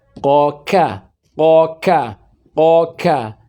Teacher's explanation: Beda bunyinya. Walaupun sama-sama pangkal lisan, tetapi secara titik keluarnya itu berbeda. Qaf lebih dulu ke bawah dibandingkan dengan kaf. Maka nanti dalam bab idgham ini masuk kategori idgham mutaqaribain karena berdekatan sekali makhrajnya.